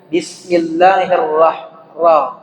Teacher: Ra sedikit saja, getarannya itu tidak terlalu berlebihan. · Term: takrir